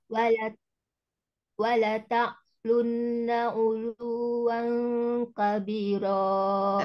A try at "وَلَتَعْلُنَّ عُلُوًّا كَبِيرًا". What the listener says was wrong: Tapi bukan jangan wala tak. Itu nggak ada hamzah. Adanya ain. Jadi bainiyah. وَلَتَعْلُنَّ عُلُوًّا كَبِيرًا. Ulunya nggak panjang, tapi di number aja. Ulu, uluwang, ditinggikan suaranya. Uluwang kabiro. Wala ta'lun.